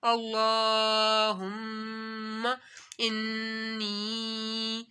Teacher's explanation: جب بھی میم کے اوپر اور نون کے اوپر یہ چھوٹی سی علامت ڈبلیو آ جاتی ہے، اس کو تشدید کہتے ہیں، تو میم مشدد اور نون مشدد میں غنہ ہوگا، یعنی ناک میں آواز کو تھوڑی دیر چھپا کر پڑھنا ہے